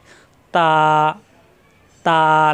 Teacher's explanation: জিহ্বার আগা উপরে দুই দাঁতের গোড়ায় লাগিয়ে ছেড়ে দিলে হয়ে যায় তা। এখানে কিন্তু লম্বা করা যাবে, তা, তা লম্বা করা যাবে।